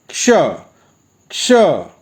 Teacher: इसके उच्चारण के लिए ध्यान रखिए, हम क से शुरू करते हैं मगर का को पूरा नहीं बोलते, बस थोड़ा सा शुरू कर कर छोड़ देते हैं और श बोल देते हैं